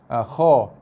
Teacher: So bila lafazkan huruf kha, okey, tengah lidah kita naik, pangkal lidah kita naik, ujung lidah turun ke bawah. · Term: huruf isti'la